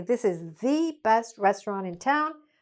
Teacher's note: people would probably say: This is thee best restaurant in town. because they want to emphasize it